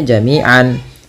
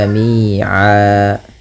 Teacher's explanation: Kalau kita waqaf, maka tanwinnya diiwadkan, dibadalkan, diganti menjadi fathah saja ketemu alif. Maka jami'an berubah menjadi jami'a. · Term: mad iwad